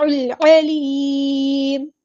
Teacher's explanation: لام یہاں پر لام قمریہ ہے، ظاہر کریں گے